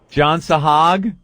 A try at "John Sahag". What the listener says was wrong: It sounded like you said John's Hog.